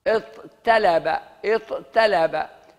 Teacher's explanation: ويبدلون التاء طاء ثم يدغمون الطاء في الطاء لتوالي مثلين